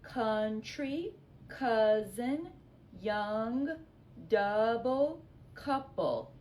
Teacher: Hear that short u, not unicorn, which would be a long u vowel, but short u like umbrella